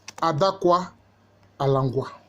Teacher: le L est allophone du D et le K est allophone du G